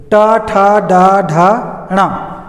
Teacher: ट वर्ग के उच्चारण में जीभ कहाँ चली जाती है, कहाँ स्पर्श करती है? मूर्धा में, तालु से ऊपर वाले हिस्से में